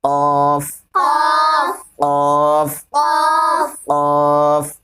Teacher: زبان کی جڑ اور اس کے مقابل اوپر کے تالو سے